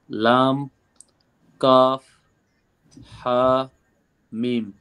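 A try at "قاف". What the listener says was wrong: কাফটাকে আরেকটু ক্লিয়ার করবেন। কাফ, কাফটা যেন স্পষ্ট হয় কাফ। কফের মতো যেন না আওয়াজ হয়।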